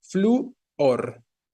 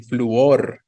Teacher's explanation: Con la fuerza en la O, pero la fuerza está en la U y por eso hay hiato